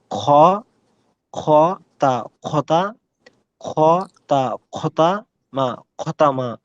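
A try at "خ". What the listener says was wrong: Okay, so remember you have to work on your kha, huh? Kha.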